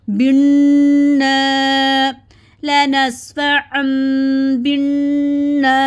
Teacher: نون کے ساتھ الف مد ہے، 2 حرکت کے برابر لمبا کریں گے. نون الف زبر نا، بن لنسفعا بالنا.